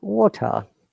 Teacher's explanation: in american english letter r is prominent and t sounds like d flap t